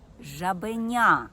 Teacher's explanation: у слові жабеня я гучніше вимовляю третій склад жабеня наголошені склади у слові вимовляються з більшою силою та довготою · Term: наголос